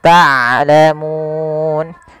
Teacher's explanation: Ini sering terjadi mengganti huruf ain dengan huruf hamzah. Harusnya dia ain dari tengah tenggorokan kita, dan ain punya sifat bainiyah. Di antara syiddah dan rokhawah tidak dialirkan suaranya dan tidak terlalu ditahan suaranya, tapi di tengah-tengah di antara keduanya.